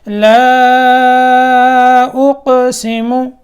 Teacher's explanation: لام کے اوپر مد کرنی ہے، یہ مد منفصل کہلاتی ہے، اور قاف میں قلقلہ کرنا ہے